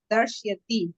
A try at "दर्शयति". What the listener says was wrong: अस्तु, दर्शयति नहीं, दर्शयति। हाँ, तत्र अकारः स्यात्।